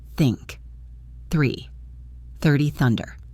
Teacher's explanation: gently place your tongue between your teeth and blow air out. There should be no voice, just air. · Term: hard the sound